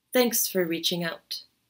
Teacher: put more emphasis or stress on the content words thanks reaching and remove some of the emphasis or stress from the word for thanks for reaching out not a big strong o sound in